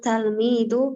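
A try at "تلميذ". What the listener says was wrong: Tilmid. Kenapa talmid? Ini bahasa sudah familiar ya, tilmid.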